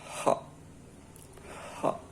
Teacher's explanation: It's glottal, so you close your vocal folds, forming an obstruction, causing friction but not vibration.